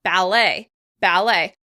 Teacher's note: we're making the words sound a little more French by stressing it on the second syllable